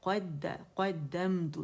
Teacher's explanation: क़ मोटा है और दाल जो है मुशद्दद है